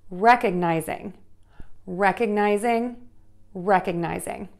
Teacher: So you have four beats there. Again, syllable number one is stressed